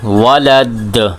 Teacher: دال بھی حروف قلقلہ میں سے ہے، اس لیے آواز کو ڈبل آئے گی